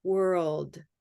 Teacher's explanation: the D sound of world it doesn't have to be a big duh it can just be almost like a tea world it's just a little release it's beautiful very nice um